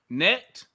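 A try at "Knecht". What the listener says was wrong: No. You say the K and then neck.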